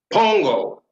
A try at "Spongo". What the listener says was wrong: No, you pronounce the S. Spongo. Spongo.